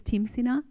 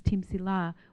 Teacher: he says Timsina, which would be the Dakota dialect, of meaning the wild turnip. But then in Deloria, she says Timsila, which would be Lakota dialect with the L sound.